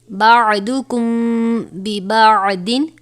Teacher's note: میم ساکن کے بعد حرف با آیا ہے لہٰذا یہاں پر اخفاء شفوی یعنی غنہ کر کے پڑھیں گے